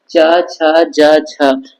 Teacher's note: चा, छा, जा, झा इन्हें स्पर्श संघर्षी व्यंजन भी कहा जाता है